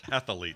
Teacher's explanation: there's no extra vowel in the middle